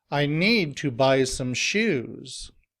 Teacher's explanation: here the stress is on need buy and shoes